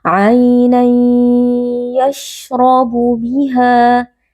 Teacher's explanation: Huruf ra di sini dibaca dengan tafkhim atau dengan tebal karena huruf ra berharakat fathah, jadi kita membaca dengan mengangkat pangkal lidah.